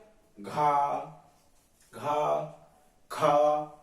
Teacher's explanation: बहुत ज्यादा प्राणवायु यूज हो रही है, बहुत ज्यादा हवा निकल रही है